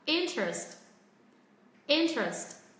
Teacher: Trọng âm vẫn rơi vào âm tiết thứ nhất. Chúng ta sẽ hạ giọng ở hai âm tiết còn lại.